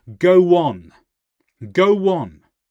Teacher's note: So we have the W between go and on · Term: intrusive sounds